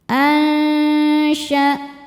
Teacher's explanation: Karena nun sukun bertemu syin. Cara bacanya nun disamarkan ke syin disertai dengung. Dengung dan kesamarannya sama besar. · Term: ikhfa hakiki ausat, ikhfa hakiki awsat